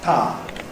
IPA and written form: paː (Power)